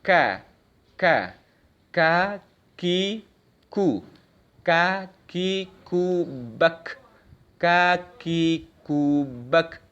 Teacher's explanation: Sudah ke atasnya yang lunak itu, ke tulang langit-langit mulut kita, ya, itu huruf kaf ke atas sedikit, ya. Jadi lidah kita yang bagian belakang itu diangkat naik ke langit-langit mulut kita, kemudian kita keluarkan suara dengan dorongan nafas.